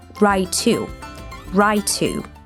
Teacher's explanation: right and to get linked as we merge the two T sounds. Right to.